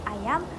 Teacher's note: vokal hadapan luas ataupun rendah iaitu a, seperti ayam